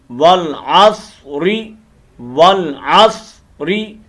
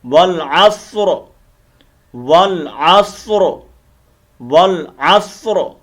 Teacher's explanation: را کو ہم نے واضح کرنا ہے اور پر کرنا ہے جب ہم وقف کریں گے · اگر ہم یہاں پر سٹاپ نہیں کرتے، ہم نے اس آیت کو اگلی اس آیت کے ساتھ ملانا ہے، تو پھر اس را کے زیر، نیچے جو زیر ہے اس کو پڑھیں گے، اور اس را کو ہم بریک کر کے پڑھیں گے